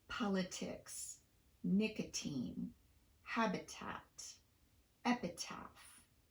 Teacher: we use a true tea not a tapped tea in the following words